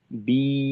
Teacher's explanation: ইয়ার মাদের টানটা যখন হবে জিহ্বার মধ্যখানটা একটু উঁচু রেখে আমাদের এই টানটা দিতে হবে